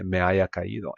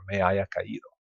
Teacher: And a lot of times, because you don't pronounce the H and there's a lot of vowel sounds here, things will just run together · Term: just runs together